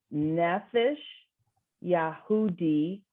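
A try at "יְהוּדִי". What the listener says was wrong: So under the yud, since it's only 2 dots, y, a little short y.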